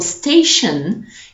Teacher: tion in English, for example, station, you make the sound shun.